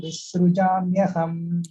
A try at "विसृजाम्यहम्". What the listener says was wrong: அந்த விஸ்ருஜாம்யஹம்ல ஒரு extra இஸ் கேக்குறது பாருங்க. So it is just விஸ்ருஜாம்யஹம். இதெல்லாம் அது because we are used to Tamil, right? That is automatically added. அதே மாதிரி இங்க விஸ்ருஜாம்யஹம்.